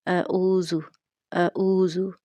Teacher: حمزہ اور عین کو ایک طرح سے ہی پڑھ لیا جاتا ہے، جو کہ غلط ہے، یعنی دونوں کی آواز جو ہے وہ حمزہ والی ہو جاتی ہے۔ عین کو ٹھیک سے مخرج اس کا ادا نہیں کیا جاتا، جو کہ وسط حلق ہے، اور اگر اس کو حلق کے وسطی حصہ سے ادا نہ کیا جائے تو اس کی آواز اس طرح سے آئے گی اعوذ اعوذ، جو کہ غلط ہے۔